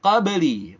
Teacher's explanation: ba pantul karena punya sifat khusus qalqalah. Qalqalahnya qalqalah sughra.